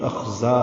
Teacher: نکالیں گے، عذاب الخزی کے پیچھے پڑھ چکے ہیں، اخزا ہے، زا کو 2 حرکات لمبا کریں گے